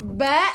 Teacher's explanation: huruf yang menggunakan dua bibir, tidak menggunakan lidah ataupun tidak menggunakan gigi ataupun langit. Kita menggunakan syafatain dua bibir. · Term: Huruf ba